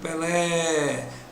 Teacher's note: a sílaba tônica é a última ela é oxítona